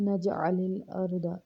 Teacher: الم نجعل الارض، علم کو سمپل پڑھیں گے، نجعل الارض، میں را کو پر پڑھیں گے، را ساکن سے پہلے والے حرف پہ زبر ہے اس لیے را کو پر پڑھیں گے